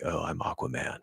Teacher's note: he tends to have this sort of like deep, almost kind of grainy voice